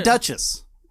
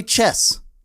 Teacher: there's a t sound in the CH it's the same sound